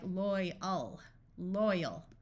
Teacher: often when AL is at the end of an English word, it becomes a muffled schwa sound